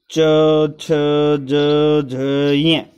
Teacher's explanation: ये तालु से बोले जाते हैं